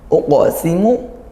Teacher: Uqsimu dipantulkan kuat, ya, qaf sukunnya uqa. Nah, ini qalqalah sughra karena qaf sukun, satu di antara 5 huruf qalqalah.